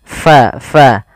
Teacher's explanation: alirkan nafas kita karena Fa sifatnya sifat hamus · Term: sifat hamas